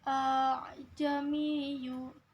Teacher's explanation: Ajamiyu yaitu termasuk hukum bacaan tashil. Cara membacanya dengan menghilangkan huruf hamzah yang kedua dengan menggantinya sebagai alif yang mati, artinya memanjangkan hamzah di depannya.